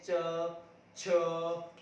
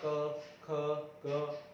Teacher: जब हम च छ ऐसे बोलेंगे तो थोड़ा जो है घर्षण होता है। तो ये दोनों हो जाएंगे स्पर्श संघर्षी।